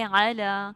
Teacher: لام کے اوپر کھڑی زبر ہے، اس کو آپ 2 حرکات لمبا کریں، ٹھیک ہے. اور آپ یہ کس طرح کریں گے کہ اپنی 2 فنگرز آرام سے جس طرح وہ مطلب کھولے نا آپ، تو وہ اسی طرح آواز ہوگی، ٹھیک ہے.